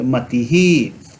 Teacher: यह विसर्ग जो है वह ह्रस्व ई के साथ आ रहा है, इसीलिए इसका उच्चारण ही जैसा होगा। जैसे मति ही हम नहीं बोलेंगे, मति ही, यह बोलेंगे मति ही।